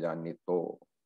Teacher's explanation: in chanting when the visarga is not pronounced, the vijanitaha becomes vijanito